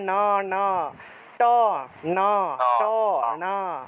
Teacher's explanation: ট উচ্চারণ করতে হলে জিহ্বাটাকে উপরের দিকে লাগাতে হয়। ঠিক আছে, ট উচ্চারণ করলেই জিহ্বাটাকে উপরের মূর্ধাতে লাগাতে হয় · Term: জিহ্বা উল্টিয়ে ন উচ্চারণ